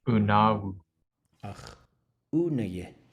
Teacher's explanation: Everything will be short and low.